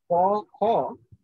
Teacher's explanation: আসলে তার মধ্যে লুকোনো আছে অ, ক যোগ অ, খ যোগ অ